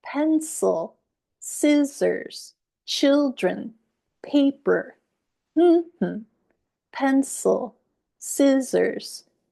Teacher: the word is stressed on the first syllable